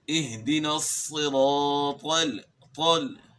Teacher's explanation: طا بھی موٹے حروف میں سے ہے، تا کی آواز کو آپ نے موٹا کرنا ہے تو طا کی آواز بن جاتی ہے، یعنی آپ نے زبان کو تالو کی طرف اٹھانا ہے